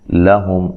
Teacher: لام کو باریک پڑھنا ہے، میم ساکن کا یہاں اظہار ہے